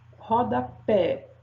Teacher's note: Rodapé, o pé tem o som mais forte